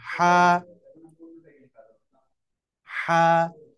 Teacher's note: একটু গলা চেপে বাতাস বের করে উচ্চারণ হবে কণ্ঠনের মধ্যখান থেকে